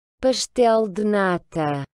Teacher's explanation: lorsque la lettre S est devant une consonne, ben, vous allez aussi prononcer le S comme un ch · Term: son ch